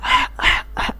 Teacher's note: یہ حلق کے درمیان والے حصے سے ادا ہوتا ہے